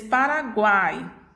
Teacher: oral ou nasal exemplo coloquei que a palavra para vocês paraguai eu tenho tritongo oral por quê porque o ar sai pela boca